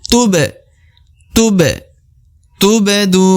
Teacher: tubdu tubdu tubdu jadi ba yang di tengah lagi ya Ba huruf ba yang di tengah dan berbentuk sukun atau berbentuk mati maka harus dipantulkan